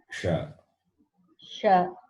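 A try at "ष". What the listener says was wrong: But I'm hearing the palatal sound. You have to be corrected.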